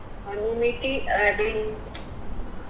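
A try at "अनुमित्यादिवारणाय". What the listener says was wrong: You don't, okay, don't split. As Anumityadi Varanaya.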